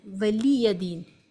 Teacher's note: زیر کی آواز نیچے کو جاتی ہے، جلدی پڑھے، معروف پڑھے، مجھول آواز سے بچیں۔ زیر کی 2 آوازیں ہیں، مجھول اے اور معروف ای آواز سے صحیح ہے، ای آواز سے پڑھنا چاہیے